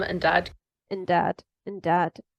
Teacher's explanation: so the and got transformed into an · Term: weak form